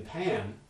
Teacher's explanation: it's hard to convince an english speaker that they're producing a nasal vowel in pam